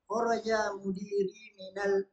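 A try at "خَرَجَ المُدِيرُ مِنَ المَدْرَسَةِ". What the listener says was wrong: Itu alif lamnya apa? Alif lam apa? Syamsiah Qamariyah. Al-Mudir. Dengar alnya enggak kalau dibaca? Al-Mudir, dengar? Qamariyah, ya.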